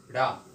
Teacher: ठीक, तो जैसे कोई चीज ऊपर फेंक दीजिए वो जाती है ऊपर फिर नीचे आ जाती है, वैसे जब इन व्यंजनों का हम उच्चारण करते हैं तो देखते हैं कि जब डा बोलोगे डा तो जीभ ऊपर गई, किसको छुई, मूर्धा को। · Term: उत्क्षिप्त व्यंजन